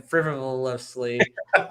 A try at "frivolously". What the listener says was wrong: There's a few extra syllables in there.